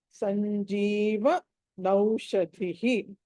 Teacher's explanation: స తర్వాత అనుస్వారం ఉంది, తర్వాత జ ఉంది కాబట్టి ఆ చవర్గంలోని పంచమాక్షరం రావాలి